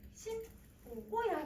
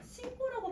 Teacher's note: 그러면 뒤에 있는 어미가 된소리로 바뀌어요.